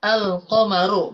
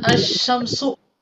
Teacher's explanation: memasukkan huruf suara huruf lam ke huruf syin otomatis huruf lamnya enggak dibaca yang dibaca adalah huruf syinnya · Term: idgam